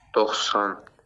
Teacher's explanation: bu 90 sözündə x da kardır, s da kardır. Deməli, hər ikisi kardır deyə götürə bilirsən bunu.